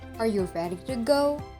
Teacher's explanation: My pitch is rising towards the end of the question, especially on the last content word, Go, which is answerable by yes or no. · The voice starts with the normal pitch, then goes up on the accented syllable, and remains up till the end of the sentence. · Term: rising intonation